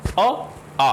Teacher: अ और आ, ये दोनों स्वर जो हैं वो कहाँ से हैं, कंठ से निकल रहे हैं। तो ये इनका जो कैटेगरी होगी वो कौन सी होगी, कंठ्य।